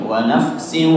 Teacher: tanwin bertemu dengan waw yaitu idgham bi gunnah, berarti ada suara yang keluar dari hidungnya.